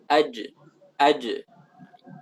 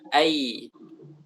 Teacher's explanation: Dari tengah lidah keluarlah jim, shin, dan ya.